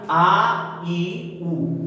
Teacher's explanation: दीर्घ स्वर जिन्हें बोलने में दो मात्रा का समय लगेगा